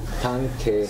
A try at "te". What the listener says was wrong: Te. Te. Make it long, because we want to know it's an instrumental. Te.